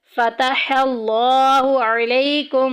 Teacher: لفظ اللہ کا لام موٹا پڑا جائے گا کیونکہ پیچھے زبر آ گئی۔